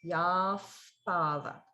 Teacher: So again, notice the yaha, with the visarga being pronounced as a if sound because pa is coming after.